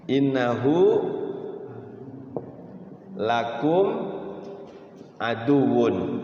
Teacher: ketika kita wakaf di aduun maka aduunnya itu W itu ditahan